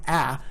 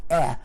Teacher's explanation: the low-front vowel is produced as the mid-front vowel when it occurs in the environment of a following nasal consonant